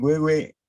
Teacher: Huehue quiere decir huehuentli, quiere decir anciano, huehuen. Pero como casi no se pronuncia la N, queda en huehue, una N oclusiva.